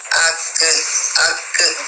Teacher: اس میں کلکلا بھی ہوتا ہے تو وہ آواز دوبارہ ٹکراتی ہے